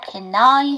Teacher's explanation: can 다음에 I죠. 연음시켜서 can I 해주시면 되고요